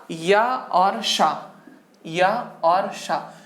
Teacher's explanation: ये आपके कहां से निकलते हैं, ये निकलते हैं आपके तालव्य से यानी तालु से